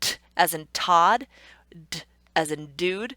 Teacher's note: the only difference between those two sounds is that one is voiced and one is not voiced.